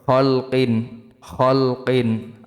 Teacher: কিন এখানে গুণ্য হবে না, তানবিন বামে আইন, আইন ইজাহারের হরফ।